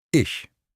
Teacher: turning the soft ch into sh. It's not sh, it's lighter, airier, like a gentle hiss.